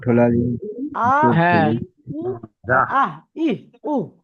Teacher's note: কন্ঠনালীর বুকের দিকের অংশ হতে উচ্চারিত হয় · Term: হামজা হা